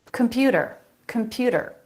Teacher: a flap instead of a t sound